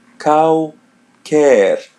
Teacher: The L is pronounced as W.